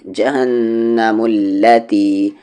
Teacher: میم کو یہاں لام میں ملا دیں گے